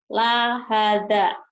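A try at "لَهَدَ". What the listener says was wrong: pendek, lahada nggak ada yang panjang. Lahada, lahada, lahada.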